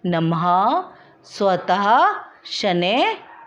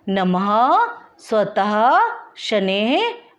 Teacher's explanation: इसको हम विसर्ग भी कहते हैं और इसका उच्चारण वर्ण के बाद ह की ध्वनि के समान होता है